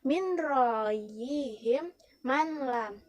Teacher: hukum bacaannya adalah idgham bilaguna, yang membacanya dengan cara memasukkan dan tanpa mendengung